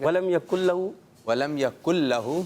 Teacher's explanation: ولم یکن لہ کا یہ لام باریک رہے گا، اس کو ہم نے باریک رکھنا ہے، پتلا رکھنا ہے. ٹھیک ہے، موٹا نہیں ہونے دینا.